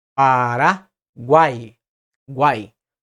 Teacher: Na última sílaba nós temos um tritongo formado pela semivogal U, pela vogal A e pela semivogal E. E esse encontro vocálico é pronunciado todo em uma só emissão de voz.